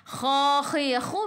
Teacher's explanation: Kha khi khu biar ada angin biar menggelagak. Kha dua harakat ada alif kecil mad asli.